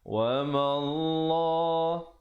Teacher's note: lafzul jalalah datang baris fathah, sebelumnya dibaca tebal dua harakat